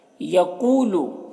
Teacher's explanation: یقولو، قاف یہ حروف مستعلیہ میں سے ہے تو قاف کو پر پڑھیں گے، اور یہاں پر واو ساکن سے پہلے قاف کے اوپر پیش ہے تو واو مدہ ہوا، اسے واو مدہ کو ایک الف کے برابر کھینچ کر پڑھتے ہیں